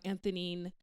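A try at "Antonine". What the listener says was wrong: Anthonine. Yeah, the H is silent. It's a H for Haiti. just H's are just silent in French.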